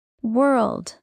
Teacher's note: rounded lips plus back of tongue lifts